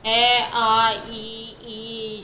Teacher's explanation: इसमें अनोष्ठीय भी बोलते हैं क्योंकि होठों का यूज नहीं होता।